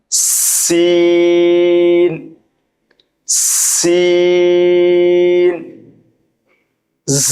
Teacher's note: জিহ্বার আগা সামনের নিচের দুই দাঁতের পেট ও আগার সঙ্গে লাগিয়ে উচ্চারণ করতে হয়। সিন, দুই দাঁতের মাঝখানে হালকা ফাঁকা থাকবে এবং বাতাস জারি থাকবে।